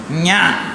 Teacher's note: அந்த ஒலி குறிப்பே மூக்கில் தான் பறக்கணும்